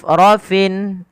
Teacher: Hamus itu apa? Hamus adalah mengalirnya nafas mengalir. Ya, ketika melafalkan fa harus alir. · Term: sifat hamusnya